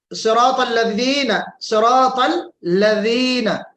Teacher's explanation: जाल का मखरज जो है वो क्या है, जुबान की नोक या तरफुल लिसान और दांतों का ये सिरा। ठीक है, जुबान की नोक को रअसुल लिसान कहते हैं और जुबान के किनारे को तरफुल लिसान कहते हैं।